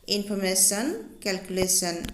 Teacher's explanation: এতিয়া আমি ইনফৰমেশন আৰু ক্যালকুলেশন ওয়াৰ্ড দুটা উচ্চাৰণ কৰোতে থাৰ্ড সিলেবলত বেছিকৈ জোৰ বা স্ট্ৰেছ দিয়া হৈছে